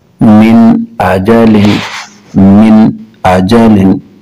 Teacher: نون ساکن ہے اور اس کے بعد حمزہ حروف حلقی ہے، تو اس کو ظاہر کر کے پڑھیں گے، غنہ نہیں کریں گے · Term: اظہار